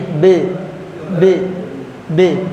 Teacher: Qalqalah Kubro pantulannya ada di bibir